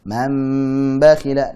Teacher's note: mim nun sukun ketemu ba dibaca iqlab, nunnya diganti dengan mim. Cara mengucapkannya dengan menempelkan kedua bibir tanpa dikerutkan, tanpa ditekan. Man bakhila, nempel biasa saja.